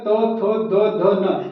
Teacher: ये हमारे दांत के सहारे से बोले जाते हैं इसलिए इसे दंत व्यंजन कहते हैं